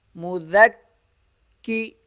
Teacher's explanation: عشیہ، میم پیش مو، ذال کاف زبر ذک، کاف زیر کی، سختی کے ساتھ ذرا رک کر کاف کو پڑھنا ہے